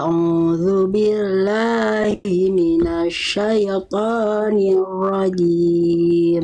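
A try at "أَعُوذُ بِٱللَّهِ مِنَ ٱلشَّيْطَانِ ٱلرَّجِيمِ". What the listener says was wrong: sekali lagi bunda huruf syin jangan monyong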